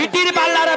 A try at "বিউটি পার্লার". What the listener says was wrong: কি পার্লার? ওটা বিটিল পার্লার নয়, বলো বিউটি পার্লার।